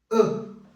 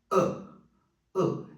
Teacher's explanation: ele é produzido aqui na garganta não é na boca eu não uso lábios dentes língua nada el relaxa um pouquinho e fala ã e é o som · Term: som do chá